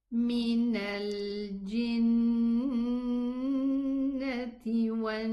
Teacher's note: bouncing the ghunna, especially when it is with a shadda